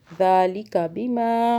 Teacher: ज़ालिका बिमा, दाल को खींचा और सॉफ्ट भी पढ़ा। बिमा में माँ को खींचा, अलिफ आ रहा मीम के पास